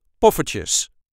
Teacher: you can hear that we barely pronounce the R. There's no need for a rolling R in there.